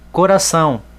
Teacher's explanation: Então o tio, que é o sinal de nasalização, ele vai servir para tornar essa sílaba atônica. Então a sílaba tônica de coração é o são.